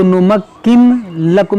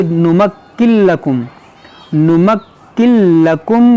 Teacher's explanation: اس نون کو نہیں پڑھیں گے، اس نون کو اس لام میں داخل کر دیں گے، یہاں پر ادغام ہوگا بغیر گنہ کے۔